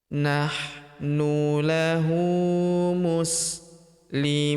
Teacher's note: Huruf mu kita panjangkan dua harakat karena terdapat wawu sukun di depannya